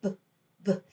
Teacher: We don't want to add that schwa onto the buh sound.